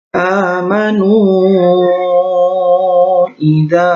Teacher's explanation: namanya mad jaiz munfasil sebab ada mad bertemu hamzah pada kalimat yang berbeda atau dalam dua kalimat. Panjangnya 2-5 harokat.